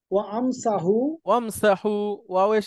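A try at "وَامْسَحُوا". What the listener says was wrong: ওয়ামসাহু। ওয়াও এসে মিমকে ধরবে। ওয়াও এসে মিমকে ধরবে। ওয়ামসাহু।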